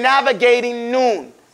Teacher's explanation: when you have the ing after an N coming, you don't pronounce that G. You say navigating Noon.